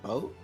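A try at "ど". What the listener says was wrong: Bow means you're touching your lips together now instead of your tongue to your front teeth. What other sound can you make by touching your front to your What other sound can you make without changing your mouth at all?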